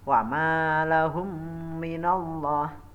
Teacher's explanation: memasukkan mim mati ke dalam mim di depannya yang disertai dengan mendengung. Adapun contohnya wa ma lahum minallah, itu ya ada mim mati ketemu dengan huruf mim. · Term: idgham mimi